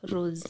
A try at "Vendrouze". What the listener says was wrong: It's Vendrouze. Rouze. So Rouze, Rouze. Rouze. Rouze. Just say Rouze. Yeah, it's not S-E.